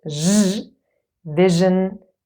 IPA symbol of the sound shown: ʒ